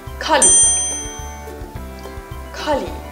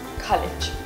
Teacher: The ending sound in this word is pronounced as a g and not a j sound, like many students do.